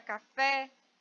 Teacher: Já na palavra café, eu sei qual é a sílaba mais forte, porque ela está acentuada e é a sílaba fé.